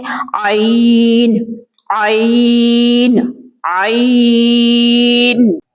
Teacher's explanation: حرف عین درمیانی حلق سے ادا ہوتا ہے. حلق کے 3 حصے ہیں تو لہٰذا یہ وسط حلق سے ادا ہوگا جہاں سے ہم ہا ادا کرتے ہیں.